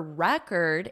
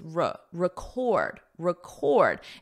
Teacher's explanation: the syllable stress for record is on the first syllable as a noun, but as the verb, it's record, record